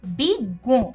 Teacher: যখন এই যুক্ত বর্ণটি শব্দের মধ্যে কিংবা শেষে থাকে তখন এর উচ্চারণটা দ্বিত্ব হয়। যেমন এখানে দেখা যাচ্ছে বিজ্ঞ, এখানে গ দ্বিত্ব হচ্ছে এবং তার উপরে একটা চন্দ্রবিন্দু রয়েছে।